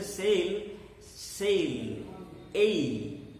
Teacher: But the sound we make between S and L, when we pronounce the word S-A-L-E, when we pronounce it as sail, between S and L, although we see only one vowel, we make two vowel sounds